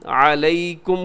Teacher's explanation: علیکم یا لین ہے، یا ساکن سے پہلے زبر ہے